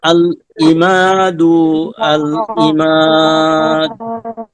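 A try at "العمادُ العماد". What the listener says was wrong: প্রথমবার যে দু বললেন দুটা একটু টান হয়ে গেছে, টান হবে না, হ্যাঁ আবার বলেন।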